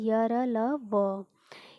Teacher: इनका उच्चारण जीभ, तालु, दांत और ओंठों के परस्पर सटाने से होता है, किंतु कहीं भी पूर्ण स्पर्श नहीं होता। अतः ये चारों अंतस्थ व्यंजन यानी अर्ध स्वर कहलाते हैं।